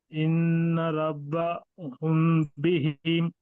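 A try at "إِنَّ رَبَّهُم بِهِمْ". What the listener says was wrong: بولے تو میم دونوں ہونٹ ملا رہے آپ، دونوں ہونٹ نہیں ملانا. یہاں تک لے کے جا کے اس کو چھوڑ دیجئے. ربہم بہم. ان ربہم بہم، ربہم بولنے میں، ربہم بہم بولنے میں فرق ہے.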